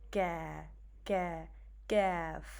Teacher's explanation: If you notice, the Kaaf is a little bit forward, whereas Qaaf is a little bit towards the end of the tongue, right? So when we touch the root of the tongue on the hard palate, then we make Kaaf